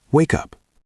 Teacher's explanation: The K sound links to the U.